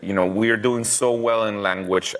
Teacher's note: It sounds like he's saying len, like almost instead of L-A-N, he sounds like he's saying L-E-N.